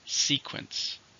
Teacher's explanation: How many syllables are in sequence? 2, stress on the first.